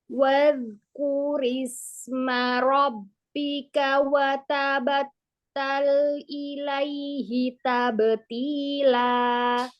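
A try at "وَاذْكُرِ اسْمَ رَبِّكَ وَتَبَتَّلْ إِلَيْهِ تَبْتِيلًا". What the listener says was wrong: Wadh. Tambahkan lagi rokhwahnya. Ketemu kaf, dhammah. Nah, ada harokat, bukan sukun. Tambahkan lagi. Dialirkan, dinikmatin. Jadi lebih enak. Huruf taknya tipiskan lagi. Tabeti.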